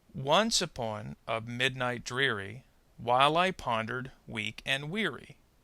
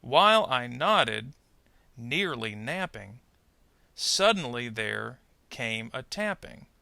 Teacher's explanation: notice in most cases the first part of each group is stressed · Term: trochees